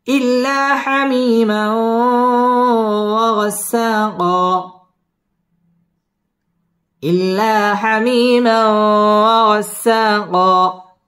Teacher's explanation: দুই জবরের বামে ওয়াকফ একালিফ টান দিয়ে ওয়াকফ করতে হবে